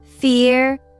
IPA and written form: fɪər (fear)